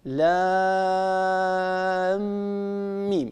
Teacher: الحكم هنا إدغام شفوي، يعني ندغم الميم في الميم فيصير النطق بميم مشددة